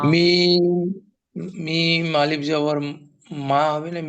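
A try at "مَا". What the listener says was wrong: আরো আরো টানেন, আরো টানেন, মিম জবর কি হয় ভাই? মিম জবর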